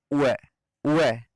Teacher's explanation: उ और ए को एक साथ जब बोलेंगे उ है तो वह की ध्वनि निकलती है। ई और ए को जब एक साथ बोलेंगे तो निकलेगी ई है।